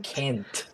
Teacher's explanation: hago una T voiceless, o sea que no requiere de mi voz